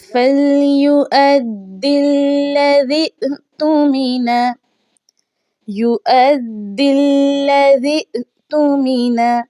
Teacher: तो पीछे वाले लफ्ज़ पे आ जाइए, वाव के ऊपर जो हमज़ा है वाव को नहीं पढ़ा जाएगा, हमज़ा को हमने पढ़ना है क्योंकि हरकत जो है वो हमज़ा के ऊपर आ चुकी है। तो दाल को लाम के साथ मिलाना है, खाली अलिफ नहीं पढ़ा जाएगा।